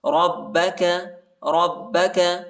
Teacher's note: را کو با کے ساتھ ملائیں گے اور با کو شدت کے ساتھ پڑھنا ہے، سختی کے ساتھ